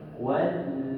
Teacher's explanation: Yang ini kita jangan baca tuan-tuan, sebab ini adalah hamzah wasal. Disebut huruf hamzah wasal tidak ada dari segi sebutan. Terus lompat kepada huruf lam.